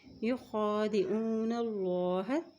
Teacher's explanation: اللہ کے نام سے پہلے زبر آ گئی ہے تو اللہ کا نام ہم موٹا پڑھیں گے، اور خا کے اوپر کھڑی زبر ہے تو خا کو ایک حرکت پڑھیں گے۔